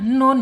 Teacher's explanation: Nun secara makhraj ada di alisan yaitu ujung lidah menyentuh langit-langit ya disejajarkan dengan gigi seri